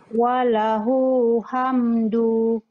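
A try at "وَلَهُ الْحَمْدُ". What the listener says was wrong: Okay, walahul. Walahul hamdu. Ha, dia bunyi, kena jelas bunyi alif lam tu, kena jelas bunyi dia.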